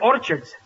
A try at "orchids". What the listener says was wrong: It's not orchards, it's orchids. The CH is pronounced like K.